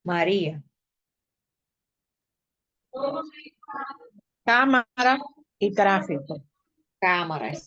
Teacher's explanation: esas se acentúan en la antepenúltima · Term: palabra estrujula